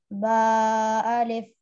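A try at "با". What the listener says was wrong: जी बा को थोड़ा साफ बोलिए और होठो को अच्छी तरीके से मिलाकर, बा बा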